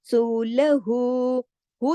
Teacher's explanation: जितना वाव मद्दा को खींचते हैं ना दो हरकत तक, इसी तरह उल्टा पेश भी दो हरकत तक खींचा जाता है